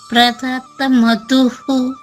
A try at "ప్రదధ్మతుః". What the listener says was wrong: Very good. నేర్చుకోండి.